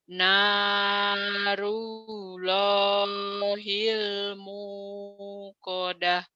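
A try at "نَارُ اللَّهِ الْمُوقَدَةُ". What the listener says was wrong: Bagus.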